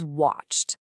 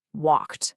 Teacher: use that crisp t sound at the very end instead of adding an extra awkward syllable